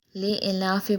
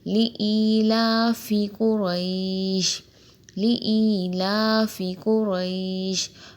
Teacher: لِإِيلَافِ قُرَیش، لِإِيلَافِ قُرَیش، بہت سے لوگ لِإِلاف پڑھتے ہیں، لِإِلاف یعنی بالکل ہی مجہول پڑھتے ہیں، لِإِلَافِ، یہ یائے مدہ ہے، یائے ساکن سے پہلے زیر ہے، تھوڑا سا کھینچیں گے بھی اسے